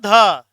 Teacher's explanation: जो ये ध है ना, ध, ये तवर्ग में आता है, ता था द धा ना, और इसका उच्चारण स्थान हो जाएगा दंत, तुलसा नाम दंता। तो जो ध है ये दंत्य ध्वनि है, नासिक्य ध्वनि नहीं है ये